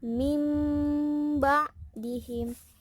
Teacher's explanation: Jadi tidak dibaca min ba'dihim tapi diubah menjadi mim. Biasa orang ada di sini mim mati tulisannya gitu. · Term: iqlab